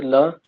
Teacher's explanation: जीव के पार्श्व भाग से निकलता है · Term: पार्श्विक